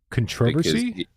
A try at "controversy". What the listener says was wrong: I think you put the emphasis on the wrong syllable.